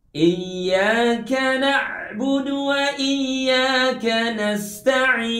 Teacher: huruf ain tidak termasuk huruf yang keluar dari hidung. Huruf ain keluar dari tenggorokan.